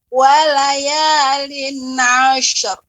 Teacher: shin memiliki sifat mengalir